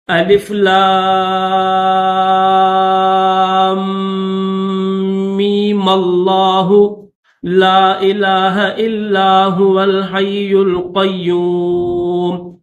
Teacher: لام کو تو کھینچیں گے لیکن میم کو نہیں کھینچیں گے، بنا کھینچے میم کو لفظ اللہ کے ساتھ ملا دیں گے اس طرح الف لام میم اللہ لا الہ الا هو الحی القیوم.